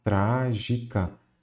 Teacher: Não é a última nem a penúltima, é a antepenúltima. Se é a antepenúltima, ela é proparoxítona e todas são acentuadas.